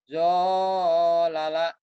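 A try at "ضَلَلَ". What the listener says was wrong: do, bukan jo, do, dolala, dolala, yang ini,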